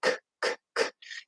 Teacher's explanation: there's a strong K, which is what would be called aspirated, which just means that there's a lot of airflow. Okay, so you're going to hear a little puff of air.